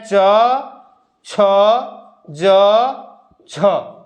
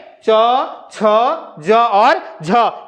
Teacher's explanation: स्पर्श संघर्षी व्यंजन यानी इनका उच्चारण करते समय जब जिह्वा स्पर्श करती है तो वो संघर्ष करती है मुंह के अन्य अंगों से · जब जिह्वा है जो वायु निकलती है वो संघर्ष के साथ निकलती है